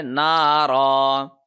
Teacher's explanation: وقف کیا تو یہ ایک زبر ختم ہو جائے گا اور را کو ہم ایک سیکنڈ لمبا کریں گے